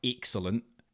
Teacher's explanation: he really, flattens out his E sounds